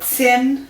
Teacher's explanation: it's not a full ch, but it's not the t sound, but it's a ts, so it's in between